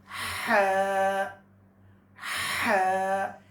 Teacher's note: یہ والی ہا درمیان حلق سے ادا کریں گے